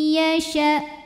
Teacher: idgham bhunah karena ada nun sukun yang menghadapi huruf ya maka bunyi nunnya dilebur atau dimasukkan ke ya ya disertai bunyi dengung tahan dulu sampai masuk ke hidung